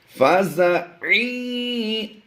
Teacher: عین کی ادائیگی یا کے ساتھ ملاتے ہوئے کریں گے